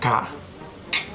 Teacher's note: si pronuncias la K, no sientes vibración. Entonces el sonido de la K es un sonido sordo.